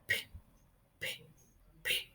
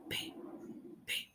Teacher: No hay vibración de las cuerdas vocales. P, P. Es únicamente como de los labios hacia afuera expulsando el aire. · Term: sonido sordo